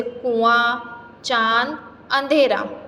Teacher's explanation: बच्चों, किसी भी वर्ण का उच्चारण करते समय हवा नाक और मुंह दोनों से निकलती है तो उसकी शिरोरेखा के ऊपर चंद्रबिंदु लगाया जाता है, जिसे अनुनासिक कहते हैं। यानी चंद्रबिंदु की मात्रा किसी भी शब्द पर लगती है तो ध्वनि नाक और मुंह दोनों से निकलती है